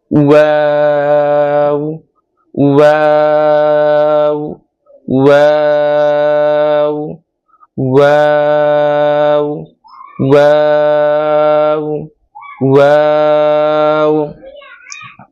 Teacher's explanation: ওয়াও হরফটা একবারে নরম হবে এবং দুই ঠোঁট দিয়ে উচ্চারণ হবে। আওয়াজটা ভিতর থেকে আসবে, দুই ঠোঁট একবারে গোল হয়ে যাবে, আওয়াজটা একেবারে নরম হবে।